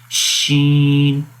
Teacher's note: اش، آواز بھی جاری ہے اور سانس بھی جاری ہے۔ استفال، شین کو باریک پڑھیں گے، استفال کا مطلب باریک، اس وجہ سے اس کو پڑھیں گے شین، باریک ہوتا ہے۔